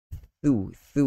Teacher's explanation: ujung lidah itu sentuh pada dua gigi kacip bahagian hadapan atas itu.